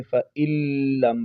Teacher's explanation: یہاں پر نون کا لام میں ادغام ہو چکا ہے، تو فَإِن لم نہیں پڑھیں گے، فَإِن لم پڑھیں گے اور لام کو جماؤ کے ساتھ ادا کریں گے۔